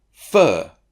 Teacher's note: r controlled syllable an example fur the symbol vowel r and it's that r that controls what the vowel sounds like